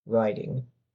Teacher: In the United States, that T is probably going to sound more like a D.